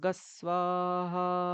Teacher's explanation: ঠিক আছে, মানে এটার উচ্চারণ অ্যাকচুয়ালি গুং, গয়ের হ্রস্বকার অনুস্বার, গুং এরকম উচ্চারণ করা হয়, কিন্তু ওটাকে যখন আমরা কৃষ্ণ যজুর্বেদ অনুসারে পড়ি তখন গস এরকম বলে দিই। অনুসারের পরে সোয়া থাকলে গস, গুংটা আমরা বলি না, গুং সোহা এরকম বলি না, গস।